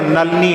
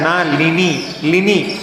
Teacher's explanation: नलिनी नहीं बोलना है, नलिनी, ली ली ली का उच्चारण, नलिनी। जल्दी जल्दी पढ़ते हैं तो नलनी हो जाता है, वो नलनी नहीं बोलना, नलिनी ऐसा